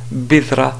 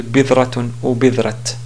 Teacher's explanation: si on veut s'arrêter sur cette ta marbuta, on prononce bidra au lieu de bidratun ou bidrat